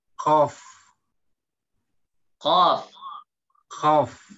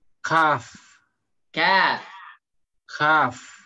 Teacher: kalau qaf tebal, ka ditipiskan